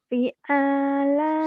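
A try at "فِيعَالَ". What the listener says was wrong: Salah. Konsentrasi, mana yang panjang? Salah panjang pendeknya doang. Semua panjang itu. Makan P-nya panjang juga.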